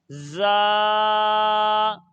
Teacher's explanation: زا کو ادا کرتے وقت سیٹی کی طرح تیز آواز نکلتی ہے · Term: سیٹی کی آواز